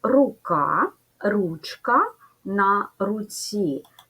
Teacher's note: Чергуються звуки к, ч, ц.